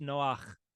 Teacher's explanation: that little what's called a furtive patach, that short a sound before the het later. But that is the name Noah.